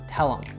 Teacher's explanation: Another peculiarity of this utterance is that the him actually doesn't sound anything like that. We cut the H and it just sounds like a schwa sound plus M.